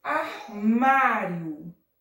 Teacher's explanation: a sílaba mais forte é o mar. E recebe acento agudo, tá?